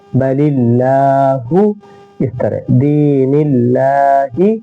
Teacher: یرید اللہ، خلق اللہ، اس طرح بل اللہ، یہاں اللہ کے لام سے پہلے زیر ہے اس لیے ہم اس کو اللہ کے لام کو باریک پڑھیں گے